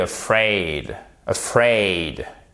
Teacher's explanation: Vous avez votre accent tonique en fait sur la seconde syllabe.